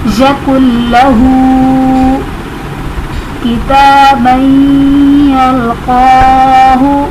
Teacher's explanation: یکن لہ کتابا یلقاہ، اس میں تا پر کھڑا زبر ہے تو الف مدہ کے قائم مقام ہے، اور یا ساکن تنوین کے بعد حروف یرملون میں سے یا آ رہا ہے تو یہاں پر ادغام مع الغنہ ہوگا